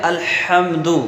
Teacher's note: یہ دال پہ پیش ہے تو دال کو ہی بغیر کھینچے پڑھیں گے۔ تو پورا کلمہ ہم ایسے پڑھیں گے الحمدو۔ · بڑا ہا درمیان حلق سے ادا ہوتا ہے، یعنی درمیان حلق پر جب زور دیتے ہیں تب یہ صحیح معنوں میں ادا ہوتا ہے